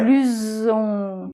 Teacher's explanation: le S sonore, avec la liaison, c'est un S qui fait ZZZZZ, comme une abeille